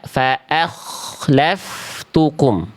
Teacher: Hamzahnya tetap tipis karena hamzah merupakan huruf tipis ya.